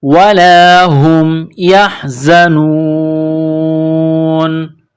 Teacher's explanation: جب سٹاپ کریں گے وقف کریں گے تو نون کو سائلنٹ کریں گے